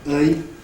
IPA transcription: ɜɪ